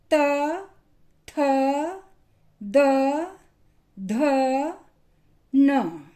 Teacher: इन वर्णों का जब हम उच्चारण करते हैं तो हमारी टंग नीचे के दांतों को पीछे से स्पर्श करती है। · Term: त वर्ग